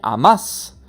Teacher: le a est accentué pour dire tu aimes et amas ou c'est le deuxième a de la terminaison la deuxième syllabe qui est accentuée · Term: la place de l'accent